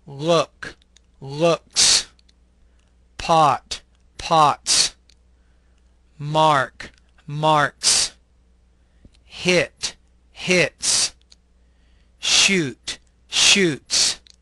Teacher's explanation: the S is actually pronounced as an S sound without creating an additional syllable